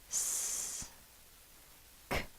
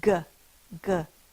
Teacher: The word ends in a k. The k sound is not voiced. If it was voiced, it would be g